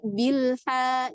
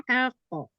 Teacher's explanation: Di huruf H lebih dibuka rongga mulutnya, tapi dikembalikan makhrajnya ke tengah-tengah tenggorokan. Jadi jangan sampai dia itu tebal, bukan bilha, bukan, tapi bilha.